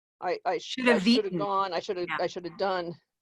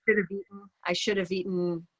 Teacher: when the v of have disappears. It disappears before consonants and it stays before vowels.